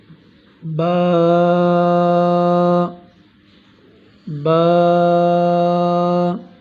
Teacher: با دونوں ہونٹوں کے اندرونی تری کے حصے ملنے سے ادا ہوتا ہے